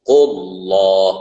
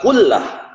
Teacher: Allah itu disebut dengan tafkhim karena lafaz atau kalimat Allah ya, dibacanya Allah karena sebelumnya bertemu dengan dhamma. Qullah bukan kullah.